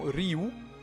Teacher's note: le nom de Ra est composé de 2 consonnes, un R et un Aïn, une sorte de gargarisme. En ajoutant les voyelles I et OU, on obtient la prononciation Ryu, ce qui, selon Smith, correspond à la prononciation réelle de l'ancien empire égyptien.